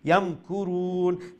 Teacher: এখানে মিম সাকিনকে আমরা স্পষ্ট করে উচ্চারণ, অর্থাৎ ইজহারে শাফাওয়ি যেটা আমরা বলে থাকি